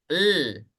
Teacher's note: huruf lam dia makhrajnya ada di ujung lidah ya mengarah ke langit-langit